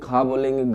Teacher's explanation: का बोलेंगे, खा बोलेंगे, गा बोलेंगे तो इसका उच्चारण स्थान जो है कंठ ही रहेगा, क्योंकि आवाज हमारी कहां से निकलती है, कंठ से।